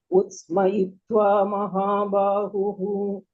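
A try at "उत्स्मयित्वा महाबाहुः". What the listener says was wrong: Very good. Very good. Thank you, auntie.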